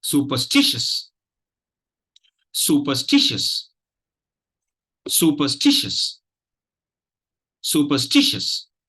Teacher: So you have 2 stress syllables. Stish is the primary stress. The 3rd syllable is the primary stress syllable. And su is the 1st syllable is the secondary stress syllable.